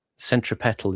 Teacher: >> The gap between sign >> pronunciation centripal is is the way they say >> centropetal is putting the stress on the third syllable